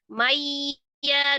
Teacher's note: Mayya nun sukun ketemu dengan ya idgham bi gunnah. Mayya diidghamkan dengan gunnah.